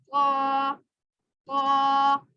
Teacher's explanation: ये जो क़ा है ये मोटा पड़ा जाएगा, जुबान की जड़ ऊपर को जाने उठेगी, इसको तुआ नहीं पढ़ना, अरबी में इसको क़ा पढ़ते हैं।